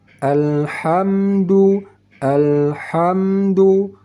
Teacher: jangan pakai qalqalah pada huruf lam mati